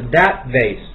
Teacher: That▁vase▁这个▁T▁它读不出来的，所以是▁that▁vase，▁只是有个停顿罢了 。▁That▁vase，▁那你要读▁that，▁这是中式的发音。▁T▁在爆破音这个单词上面，我跟大家讲，一般情况下它这个是个元音，这个后面是一个爆破音，不管后面是加上一个，如果后面是接的辅音的时候，基本上都是失去。如果后面没有